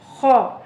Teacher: या खौ ज़बर या खौ खराश के साथ मोटा करके पढ़ेंगे